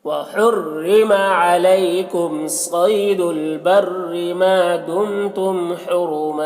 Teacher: हुरुमा रौ को पुर पढ़ेंगे और यहाँ पर वक्फ करेंगे तो एक ज़बर के साथ अलिफ पढ़ा जाएगा